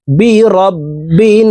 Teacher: এই বা তাশদি নুনের সাথে নাকের বাঁশি থেকে গুন্না করে পড়তে হবে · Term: ওয়াজিব গুন্না